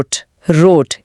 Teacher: हिंदी का र जीभ की नोक से आता है। जर्मन आर गले के पिछले हिस्से से आता है। जैसे आप गरारे कर रहे हो।